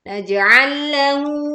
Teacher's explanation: tengah lidah mengangkat, menekan ke atas langit-langit, ya sampai menempel sehingga suara dan angin tertahan saat jim sukun dibacakan